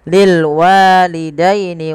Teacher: Pada lafal wa ada mad tabi'i ya, fathah bertemu dengan alif kecil, dia mad tabi'i, panjangkan dua harakat